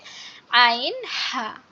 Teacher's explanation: খুবই গলা চেপে ফ্যাস ফ্যাস আওয়াজে উচ্চারণ হবে